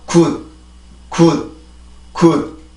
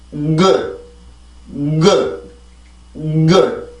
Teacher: 그냥 올라오는 순간 열지 않고 한번 공기를 모으기 때문에 시작 소리가 느리죠. 공기가 나오는 시간이 느리기 때문에.